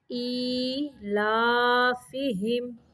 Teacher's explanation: حمزہ کے نیچے کھڑی زیر ہے اور لام کے اوپر کھڑی زبر، ان دونوں کی لمبائی برابر کرنی ہے